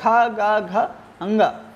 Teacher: तो यहाँ पर इनको ये चूंकि कंठ से बोले जाते हैं, ये कंठ से बोलने वाले वर्ण हैं, तो इनको कंठ वर्ण कहा गया